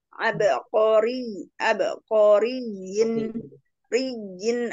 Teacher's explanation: ra berharokat kasrah baca tarkik